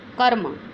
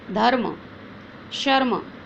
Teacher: र स्वर रहित होने पर वह अगले व्यंजन के ऊपर लगता है, और जब र स्वर रहित होता है, जब र में कोई स्वर नहीं होता, तब वह व्यंजन के ऊपर जुड़ जाता है। जैसे कर्म, म के साथ ध्वनि आ रही है, क के साथ ध्वनि आ रही है अ की, लेकिन र के साथ कोई ध्वनि नहीं आ रही है